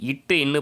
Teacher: நாவின் நுனி பகுதி, அன்னத்தின் நுனி பகுதி